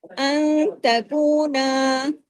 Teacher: نون ساکن کے بعد جو تا آیا تو اس کی وجہ سے اخفا ہو رہا ہے